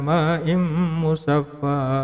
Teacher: Jadi tanwinnya itu dileburkan dengan huruf mim yang mengikutinya, atau nun sukunnya dileburkan dengan huruf mim yang mengikutinya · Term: idgham bi gunnah